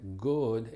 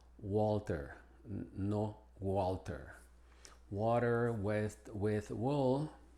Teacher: que la W y la g tiene una pronunciación diferente y la diferencia es de que la g es gutural pero la W no lo es